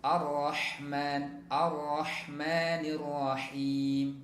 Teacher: Kemudian juga perhatikan pada Ar-Rahman itu tasydidnya ya, pada huruf ra ditekan sehingga getarannya menjadi lebih sedikit ya, ra-nya tebal ya